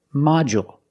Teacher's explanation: we use the dark L because it's after a vowel